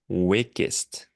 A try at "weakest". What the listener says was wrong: Weak. Est. Yeah, it sounded like you said wickest. Weakest. Yeah, I mean, it's weak, W-E-A-K, meaning not strong, but pronounced exactly the same way as week, W-E-E-K. like, What day of the week is it?